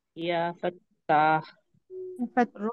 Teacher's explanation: آخری میں ہا ہے نا، اس کی ادائیگی ہونی چاہیے